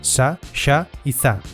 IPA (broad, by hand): sa, ʃa y za